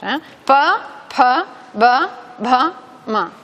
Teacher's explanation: el punto de articulación y el órgano articulatorio es el mismo, los labios. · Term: labiales